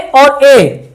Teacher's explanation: ए और ए, इनका जो उच्चारण स्थान है वो दो हैं, कंठ और तालु। कंठ से भी उच्चारित होती है और तालु से भी।